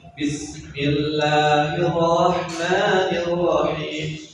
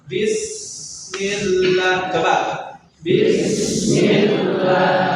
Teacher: Sin itu tidak hanya segi nafas yang keluar tapi suaranya mengalir